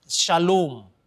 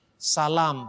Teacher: Maka O panjang kadang-kadang berubah menjadi A panjang.